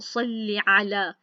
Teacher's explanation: आइन पढ़ा है, हमज़ा नहीं पढ़ा।